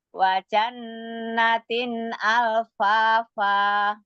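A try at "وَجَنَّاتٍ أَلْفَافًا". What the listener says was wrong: Nun musyadana, ada nun musyadada tuh. Wa jannatin alfafa. Nun musyadan tuh. jannatin harus lebih panjang gunanya apa durasinya daripada mat. Ya enggak 4 juga kepanjangan. Maksudnya lebih panjang sedikit lah.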